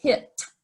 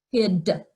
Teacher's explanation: The t is unvoiced. D is a voice sound.